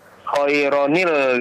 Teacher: khairan ketemu alif lam ya, harus dibaca dengan nunul wiqayah ya, sehingga dibaca khairanil